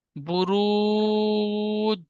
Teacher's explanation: একে ও মাদ্দা বলে। ও মাদ্দাকে এক আলিফ পরিমাণ টান দিয়ে পড়তে হয়।